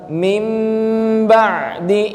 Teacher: nun sukun ketika bertemu ba Bukan dibaca Min ba'di tapi dibaca mim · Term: menjadi huruf mim